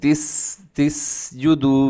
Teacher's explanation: سین میں سیٹی کی آواز ہوتی ہے، تس تس جدو، باریک اور تیز سیٹی کی آواز ہوتی ہے۔